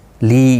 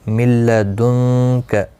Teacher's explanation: من لدنک، نون ساکن کے بعد یرملون کا لام آیا ہے، ادغام ہوگا، گنہ کے بغیر پڑھیں گے. نون ساکن کے بعد حروف اخفا کا کاف آیا ہے، اخفا حقیقی ہوگا، گنہ کے ساتھ پڑھیں گے